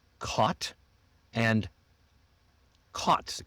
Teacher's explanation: So cot c o t the little bed that you sleep on or folding bed and cot c a u g ht are often pronounced the same in American English even though they might be different in other accents